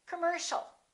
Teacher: the second syllable is stressed. The O and the IA are both reduced. So it's not com or com, it's cum.